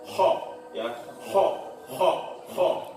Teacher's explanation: ketika mengucapkan kha maka tenggorokan itu harus bergetar. Makanya mengeluarkan seperti getaran kho.